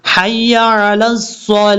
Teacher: جب وقف کریں گے تو یہاں پر تا کو ہا سے بدل دیں گے اور یہ بھاری ساؤنڈ کے ساتھ پڑھا جائے گا.